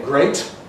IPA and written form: greɪt (great)